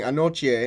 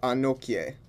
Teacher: instead of being pronounced like ki, the combination of K and Y actually make a ch sound. So when I say Denkyira, I should have been saying Denkyira, and I should have been saying Anochie instead of Anokie.